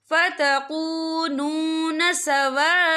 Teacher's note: या देखिए फ़तकूनून सवाअन, यहाँ खाली से पहले ज़बर है और इस पर मद भी है। ये मद जो है मद मुत्तसिल है, इसकी मिकदार 4 हरकत के बराबर है, तो हम इसे 4 हरकत के बराबर खींच के पढ़ेंगे। और आगे देखिए सवाअन, हमजा के ऊपर तनवीन है, तनवीन के बाद जो है फ़ा आ रहा है और फ़ा जो है इक्फा का वर्ड है, तो हम यहाँ इक्फा करेंगे, तनवीन की आवाज़ को नाक में छुपाएंगे।